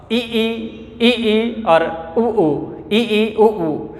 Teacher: इन ध्वनियों के उच्चारण मुख का द्वार लगभग बंद होता है। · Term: संवृत